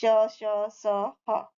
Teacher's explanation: ऊष्म व्यंजन जो एक तरह की रगड़ से उत्पन्न होते हैं